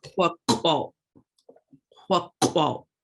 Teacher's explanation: Remember, those Q's are in the back of your throat.